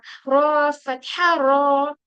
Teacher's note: और रॉ में भी सेम वही लगाना है, और रॉ को हेवी करने के लिए ये जो हमारा अक्सर लिसान है वो ऊपर की तरफ उठेगा